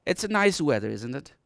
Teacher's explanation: I go down, okay, my pitch will go down at the end. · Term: falling tone